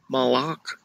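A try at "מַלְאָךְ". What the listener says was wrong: Okay, you need to stop after the lamed. So it's not malach, but mal, stop, ach. Malach.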